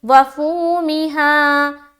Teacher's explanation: फू में वाव मद्दा, मी को जेर की हरकत के साथ और हा में फिर अलिफ मद्दा